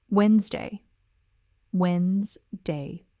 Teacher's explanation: Notice how in fast, natural speech, it really does sound like just 2 syllables.